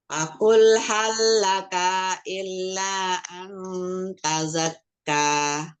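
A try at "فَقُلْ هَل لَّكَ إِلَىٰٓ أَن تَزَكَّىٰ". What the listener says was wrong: Iya, enggak maksudnya enggak pakai apa? Enggak tasdid ila an tazakka.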